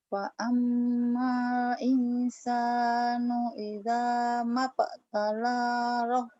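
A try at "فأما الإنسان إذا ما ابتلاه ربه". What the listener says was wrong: Mabtala panjang. Mabtalahu rabbuh. Mabtalahu rabbuh. fa'ammal. Fa'ammal insanu idza mabtalahu rabbuh.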